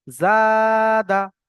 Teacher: আলিফ মাদ্দাকে এক আলিফ পরিমাণ টান দিয়ে পড়তে হবে। ডালের উপরে জাবার এসছে, জাবারটি হলো হারাকাত, হারাকাতকে তাড়াতাড়ি পড়তে হবে, টান দেওয়া নিষেধ।